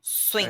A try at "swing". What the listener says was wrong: But no k at the end. So you're going swing. It's swing. No end, no end. and then you just stop.